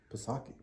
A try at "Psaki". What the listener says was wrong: No, I think the P is silent.